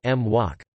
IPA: mˠwok